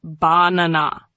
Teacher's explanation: The second part is stronger. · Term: stress